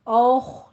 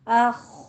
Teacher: منہ بھر کے حمزہ ادا نہیں کرنا، حمزہ کو باریک رکھنا ہے